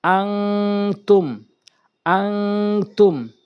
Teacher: এর পরে যদি এই 15 টি হরফের যেকোনো একটি আসে তাহলে আমরা নাকের ভিতরে নিয়ে পড়বো নুন সাকিন কে এবং তানভীন কে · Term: ইকফায়ে হাকিকের